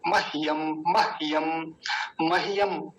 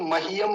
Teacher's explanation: ह आधा और यह पूरा, तो जल्दी बोला जाएगा